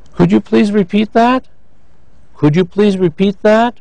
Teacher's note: Notice that was a yes-no question. So we have rising.